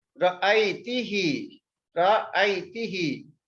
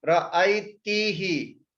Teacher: The who is changed to he. This change is for vocalic harmony.